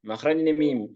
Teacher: بين الشفتين ولها خمس صفات الجهر والتوسط والاستفال والانفتاح والاذلاق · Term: مخرج الميم